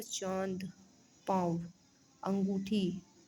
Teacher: अनुनासिक शब्दों में उच्चारण नाक व मुंह दोनों से किया जाता है